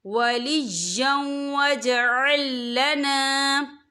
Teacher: وَاجْعَل لَّنَا مِن لَّدُنْكَ وَلِيًّا وَاجْعَل لَّنَا، یا دیکھیں وَلِيًّا، یا کے پر تنوین ہے، تنوین کے بعد جو ہے واو آ رہا ہے، اور واو جو ہے حروف یرملون میں سے ہے تو یہاں پر ادغام ہوگا، تو ہم اسے تھوڑا سا غنّے کے ساتھ پڑھیں گے